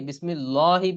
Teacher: আল্লাহু শব্দের লাম চিকুন করে না পড়ে মোটা করে পড়া